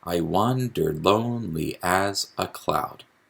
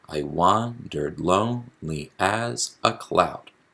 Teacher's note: we have an iambic meter because it's an unstressed syllable followed by a stressed syllable